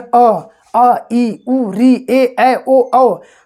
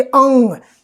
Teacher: अब देखिए, जैसे आप बोलेंगे अंग, तो देखिए अंग बोलकर आप देखिए अंग, थोड़ा सा नाक पे आपके प्रेशर पड़ेगा, जैसे लगेगा कि आवाज़ नाक से थोड़ा बहुत आ रहा है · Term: अयोगवाह